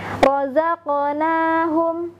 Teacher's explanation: Ketika saya melafazkan razaqnahum, yang terdengar adalah bunyi pantulannya. Karena kerasnya penekanan pada makhraj huruf qaf sehingga bunyinya akan terdengar lebih memantul. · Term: qaf sukun